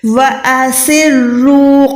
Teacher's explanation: را موٹی یہاں پر موٹی ہے کیونکہ را کے اوپر پیش ہے۔ جب بھی را زبر یا پیش کے ساتھ آتی ہے تو ہم اس کو موٹا ادا کرتے ہیں۔